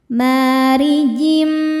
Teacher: Huruf ro dibaca tarkik sebab harakatnya kasrah. Cara bacanya ditipiskan.